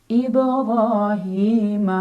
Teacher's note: Mad thobii karena ada kasrah berdiri di bawah huruf ha dibaca panjang dua harakat ibrahima Hani ni juga Mad Thobi'i karena ada Ya Sukun sebelumnya